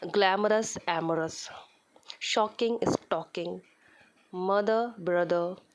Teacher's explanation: a rhyme on 2 syllables in which the last syllable is unstressed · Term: फेमिनिन राइम